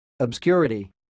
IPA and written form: əbˈskjʊrəti (obscurity)